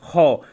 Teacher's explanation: ख बोलते हैं तो मुंह से ज्यादा हवा निकलती है ना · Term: महाप्राण व्यंजन